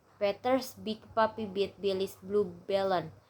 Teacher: And the p is voiceless and b is voice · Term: minimal pair